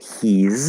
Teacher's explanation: So instead of contracting with the B, we're going to contract with an S. And actually, it's a Z sound